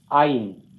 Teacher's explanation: The first syllable is accented here.